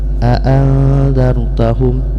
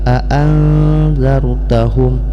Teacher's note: Arti daripada ikhfa adalah menyembunyikan, yaitu menyembunyikan suara nun mati ke dalam huruf zal, sehingga bunyi nun mati ini menjadi samar-samar. A'anzartahum, jadi jangan sampai aan itu belum ikhfa.